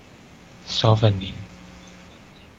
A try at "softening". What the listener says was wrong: Okay, this is pronounced as softening. So it's like open. The letter T is a silent letter T. So you don't pronounce as softening, but it's softening.